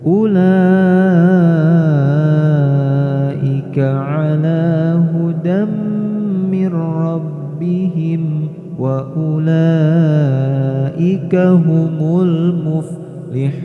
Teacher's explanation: mad wajib muttasil, maka harus dibaca lebih panjang, yakni 6 harokat. Maka jangan terlalu hemat ketika membaca lafaz ini.